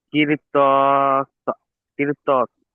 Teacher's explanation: র সাকিনের আগে জের এসছে, র বারিক হওয়ার কথা ছিল, হুরুফের মুস্তালিয়া আসার কারণে র কে পুর করে পড়তে হবে।